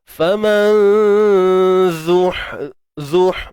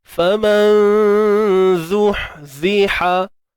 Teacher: Faman zuh, matikan ha pedas tengah kerongkong, sempit kan